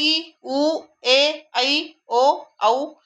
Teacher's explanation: लांब केले जातात त्यांना म्हणायचं त्यांचा उच्चार हा लांब लचक होतो त्यांना म्हणायचं दीर्घ स्वर